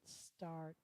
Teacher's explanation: My tongue starts out quiet, ‘s’ and then it taps the top of my mouth.